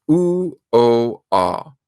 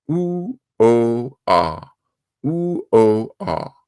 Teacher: the tongue is in the back of the mouth, and that gives us our vowels oo, o, ah. And you can see my mouth is opening.